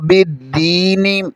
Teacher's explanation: آگے یا مدہ ہے، اسے ایک الف کے برابر کھینچیں گے